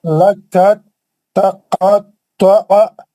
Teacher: حروف دال ساکن کا حروف تا ادغام متجانسین ہو گیا